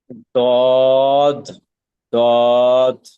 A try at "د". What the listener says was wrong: দত না, শেষে এই যে দর মতো আসবে, শেষে শেষে তর মতো আসতেছে আপনার। হ্যাঁ, এটা খেয়াল করতে হবে।